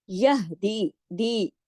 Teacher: हा को सीने की तरफ जाएगी आवाज, यहदी, ये या मद्दा है, 2 हरकत खींचेगा।